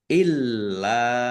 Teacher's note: Illa lamnya ada tasdidnya dibaca dobel, ditekan, dan ditahan. · Illa lam fathah alif mad thobi'i. Tetapi karena bertemu dengan huruf alif di kata yang berbeda maka menjadi mad jaiz munfasil. Dibaca panjang boleh lima, boleh dua harakat.